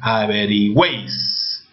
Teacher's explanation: Está sonando como un solo sonido, ¿verdad? Como una sola sílaba. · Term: triptongo